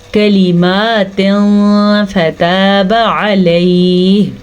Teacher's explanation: نون تنوین کے بعد فا حروف اخفا میں سے آیا ہوا ہے، تو نون تنوین کی آواز کو چھپائیں گے اور غنہ بھی کریں گے تو اخفا کا قاعدہ ادا ہوگا۔